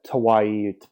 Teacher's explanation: the Kauaian accent renders the K sound to be a T sound. So that sounds like Tawai, if you're going to, instead of a K sound.